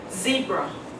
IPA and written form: ˈzi:brə (zebra)